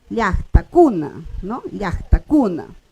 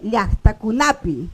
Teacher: El acento de la pronunciación va a ir en la penúltima sílaba.